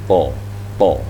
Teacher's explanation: Tetap ada vokal a, hanya sekian persen mengarah ke o gitu. Mungkin 20% lah.